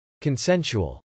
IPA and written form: kənsˈɛnsuəl (consensual)